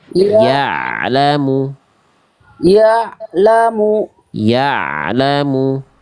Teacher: Ah, hampir bagus ya. Di sini ain sukunnya harus diantar bunyinya sampai ketemu huruf la-nya.